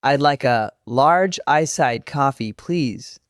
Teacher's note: Coffee was strong, iced, and large had a little punch.